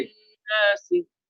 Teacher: دیکھیے ہم نے پڑھا تھا کہ جس نون پر تشدید ہو اسے نون مشدد کہتے ہیں, اور جس نون پر تشدید ہو نون وہاں ٹھہرتے ہیں، ناک میں آواز لے کر جاتے ہیں اور غنہ کرتے ہیں